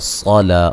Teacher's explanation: صاد کو موٹا، لام پہ الف مدہ